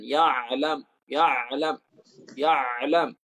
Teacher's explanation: Dengan suara yang tebal pada ya dan ain. Ya alam, tebal.